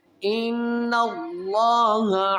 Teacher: اس سے پہلے جب زبر آئے گی تو اس لفظ اللہ کو موٹا کریں گے